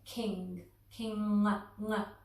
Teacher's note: And the sound that we're going to be make is a humming sound from the back of our throat. Almost like we're saying the word king, king, ng.